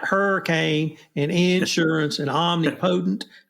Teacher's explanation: I'm a Texan, and of course we accent every first syllable, like hurricane and insurance and omnipotent.